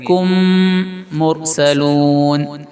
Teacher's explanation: لئی کم میم ساکن کے بعد اگر میم آ جائے تو میم کو میم سے ملا کر غنہ کے ساتھ پڑھیں گے، ناک سے پڑھیں گے